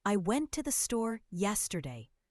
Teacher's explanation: The stressed words are went, store, and yesterday because they carry the main meaning. The little words I, to, and the are reduced, said quickly and softly. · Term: sentence stress